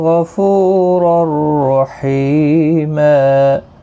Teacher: الف مدہ ہے، کا الف مدہ ہے، اور اللہ کا لام اس زبر کی وجہ سے پر پڑا جائے گا، اس کے اوپر کھڑی زبر بھی ہے، ایک الف کی مقدار کے برابر کھینچیں گے، غائن اور را، اور یہ والا را بھی پر پڑا جائے گا، یہاں پر تنوین کے بعد یرملون کا را ادغام ہوگا لیکن گنہ نہیں ہوگا